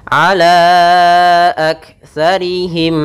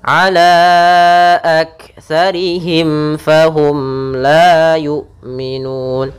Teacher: Kedua-duanya kita namakan dengan izhar syafawi, yaitu suara mimnya harus jelas, jangan ditahan gunnahnya.